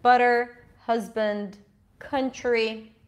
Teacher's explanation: always in a stressed position that sounds sort of like the schwa, but the mouth is a bit more open, and it's stressed